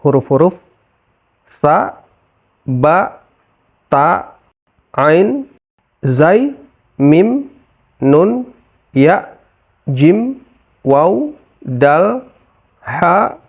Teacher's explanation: istifal adalah penurunan bagian belakang lidah saat mengucapkan huruf-huruf Arab tersebut, sehingga bacaannya menjadi lebih tipis. Jadi, kita cukup meratakan lidah; Bagian belakang lidah tidak terangkat, sehingga menjadi huruf istifal.